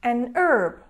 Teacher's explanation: if the letter H is not pronounced in this word and it starts with the sound a then we need the article n